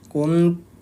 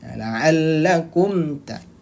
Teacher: mim sukunnya dibaca jelas, Bun. Jadi kum. Nah, mimnya im maksudnya, bukan dengung. Nah, bukan juga atau melebur ke huruf ta. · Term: idhar